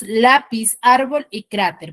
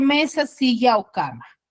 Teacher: tiene la mayor fuerza de voz en la penúltima sílaba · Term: grave